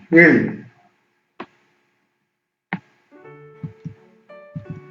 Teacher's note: when the tip of the tongue touches the back of the hard palate, it produces il. This il is produced by the tongue touching the bottom of the upper teeth.